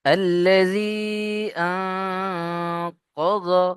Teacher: নুন সাকিনকে নাকের মধ্যে তুলতে হবে। আ, নুন সাকিনের পরে ইকফার 15টি অক্ষরের মধ্যে এখানে দেখেন কফ রয়েছে, কফ, সেই জন্য নুন সাকিনকে নাকের মধ্যে তুলে গণনা করতে হবে।